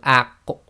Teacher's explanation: the top of your back of your throat and the back of your tongue come together when you make the Aq sound. Now in order to get the proper sound of the Qaf to come out, you have to separate.